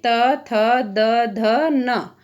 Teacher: इन 5 वर्णों का उच्चारण स्थान हमारा दंत होगा